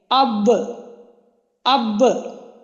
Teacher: با کی ادائیگی دونوں ہونٹوں کے جو تری والا حصہ ہے اس کو ملنے سے